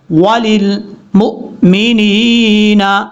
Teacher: یا کو لمبا کریں گے، حمزہ کو جھٹکے کے ساتھ